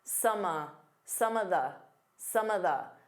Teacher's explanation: Instead of saying of, you can just do an unstress uh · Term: combine sounds together